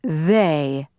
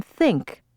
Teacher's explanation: one had a buzz to it, as in they, and the other did not, as in think. Technically, this is called voicing.